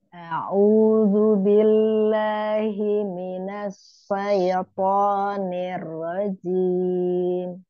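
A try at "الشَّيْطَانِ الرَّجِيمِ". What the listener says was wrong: Ya, shin-nya hilang tafasinya Umi. Syaitoni. Oni.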